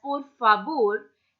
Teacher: the pronunciation of V in Spanish is always pronounced as B